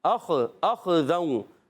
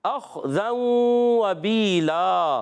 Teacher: حمزہ کو خا سے ملانا ہے، خا کو موٹا رکھنا ہے، ہلانا بھی نہیں ہے. پھر ذال پر دو زبر کی تنوین ہے، اس کے بعد واو آ گیا.